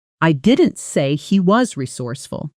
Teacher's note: With stress on he, it suggests someone else is resourceful, not him. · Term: sentence stress